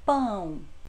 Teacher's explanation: a letrinha O foneticamente tem som de U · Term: semivogais